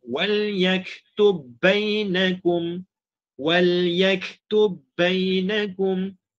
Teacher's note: terus katuk bibir je untuk menyebutkan ba yang kedua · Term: idgham mutamathilain